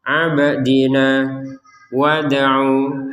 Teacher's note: ba sukun dal sukun harus dibaca dengan pantulan